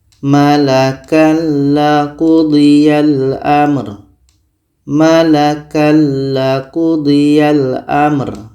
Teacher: La adalah huruf idgham bila gunnah. Maka tanwin ini kita masukkan ke la dan tidak boleh dengung. Kita baca Malakal qudiyal amr.